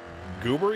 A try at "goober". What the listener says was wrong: why are you putting an extra r in it